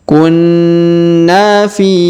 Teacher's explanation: huruf Na ditahan dan ditekan ya, didengungkan 2-3 harokat